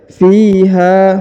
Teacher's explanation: Huruf fi dipanjangkan 2 harokat karena di depannya terdapat ya sukun